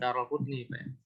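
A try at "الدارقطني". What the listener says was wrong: Darul Qutni. Itu ada macam-macam. Yang penting bukan Darul. Ada Rukutni. Bukan Adar Al-Qutni, bukan. Ya, ada Rukutni.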